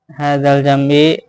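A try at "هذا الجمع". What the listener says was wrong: Hadzal jam'i bukan jam'i. Pakai itu. Orang ain ya ain. Baca hamzah.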